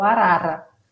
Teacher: tem o R que é o vibrante, que a gente chama de tep